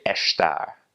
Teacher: in continental Portuguese when there is an ass before a consonant they will make that s like an SH sound